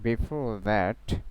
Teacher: it's a final R, so before, so R will not be pronounced